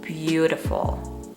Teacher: three syllables and the first syllable is the stressed one